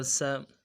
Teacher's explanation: سیٹی والا حرف ہے، سیٹی خوب نکالیں گے، باریک نکالیں گے۔